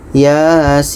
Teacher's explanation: Ya ini dibaca 2 harakat, sin ini dibaca 6 harakat karena sin ini termasuk dalam huruf 8 nih, sin.